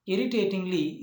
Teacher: Irritatingly is a pentasyllabic word, but the stress is on the first syllable